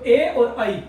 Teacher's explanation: तो ए बोला जाता है अ से और ई से, तो अ का मतलब कंठ और ई का मतलब तालु, तो ए और ऐ ये दोनों बोले जाएंगे कंठ तालु से